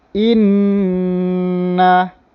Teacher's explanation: cara bacaan dia kena dengung, rasa dekat hidung